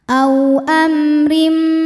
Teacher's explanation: mim sukun menghadapi huruf selain mim dan ba di sini hurufnya adalah huruf ro maka mim dibaca dengan jelas a amrim huruf ro dibunyikan secara tarqik karena ro berharakat kasrah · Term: izhar syafawi